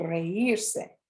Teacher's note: The weak vowel I separates from the E, rather than having the E and the I fall into the same syllable and form a diphthong. To show that the I is strong, you put an accent on it.